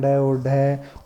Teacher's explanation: उत्क्षिप्त का मतलब होता है फेंकना, यानी ऐसा लगता है कि जीभ के द्वारा किसी वर्ण को फेंका गया है, वो होते हैं ड और ढ।